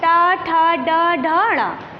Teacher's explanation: जीभ थोड़ा सा मुड़कर हमारे तालू के पिछले हिस्से को स्पर्श करती है, उसे हम मूर्धन्य कहते हैं।